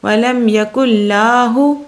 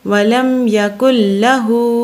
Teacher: لام کو لمبا نہیں کرنا بلکہ ہا کو لمبا کرنا ہے